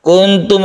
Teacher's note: ikhfa Hakiki Nun bertemu dengan ta kita panjangkan sedikit · Nun bertemu ta kita panjangkan karena dia ikhfa, mim bertemu dengan ta ini diidharkan atau harus jelas tidak berdengung.